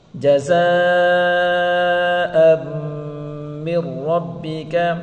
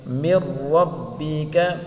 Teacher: حمزہ کو میم کے ساتھ ملا کر پڑھیں گے، میم مشدد غنہ کے ساتھ پڑھیں گے اور میم کو را کے ساتھ پڑھیں گے.